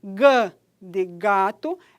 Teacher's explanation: é a parte posterior da língua que se desloca e vai tocar lá no véu palatino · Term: velar